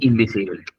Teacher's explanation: Solamente un comentario de eso que acabaste de decir, que incluso como por ejemplo, invitar, que se escribe con N y B corta, lo pronunciamos como si se escribiera con M y B larga